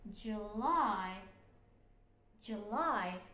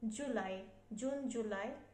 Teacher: তাহলে July, এখানে stress হবে second syllableটা